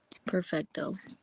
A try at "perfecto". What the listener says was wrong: Perfecto. You can't roll your R's? Perfecto.